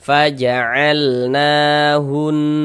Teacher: Tapi kalau harokat fathah itu bentuknya berdiri seperti ini, berbentuk alif kecil seperti ini, nah ini menandakan huruf itu kalau di atasnya ada tanda seperti ini dibaca panjang. Sehingganya kita baca panjang, mad tabi'i panjang 2 harokat